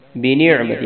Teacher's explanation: عین کو گلے کے درمیان سے نکالنا ہے